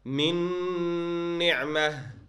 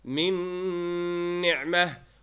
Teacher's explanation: you will skip the noon and go into the next letter and give ghunna, or maybe you don't give ghunna sometimes. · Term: idgham with ghunna